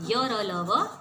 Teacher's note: अंतस्थ व्यंजनों का उच्चारण करते समय मुख का कोई अंग दूसरे अंग का पूरी तरह स्पर्श नहीं करता। उसमें तो स्पर्श करता है, इसमें स्पर्श नहीं करता, अर्थात इनका उच्चारण स्वरों और व्यंजनों के बीच की स्थिति में होता है, इसलिए इन्हें हम अंतस्थ व्यंजन कहते हैं।